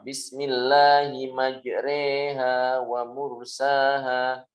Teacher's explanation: Itu namanya imalah mencondongkan kepada kasroh fathah dicondongkan kepada kasrah